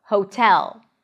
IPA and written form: hoʊtɛl (hotel)